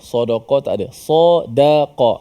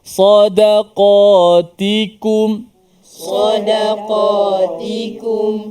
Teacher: Ini selang-seli. Sa tebal, da nipis, qaf tebal, ta nipis.